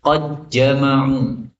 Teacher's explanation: Maka diidghamkan menjadi qad jama'u. Lebih mudah ya. Qad jama'u. Dalnya hilang.